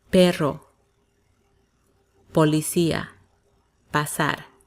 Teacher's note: Similar to English, but not explosive, so it sounds softer.